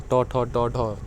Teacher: छठा आपका हो जाएगा मूर्धन्य। जिन वर्णों का उच्चारण जिह्वा को मूर्धा पर लगाने से होता है उन्हें मूर्धन्य कहते हैं